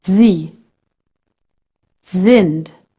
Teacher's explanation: If S is followed by a vowel, you pronounce it like the Z in the word lazy.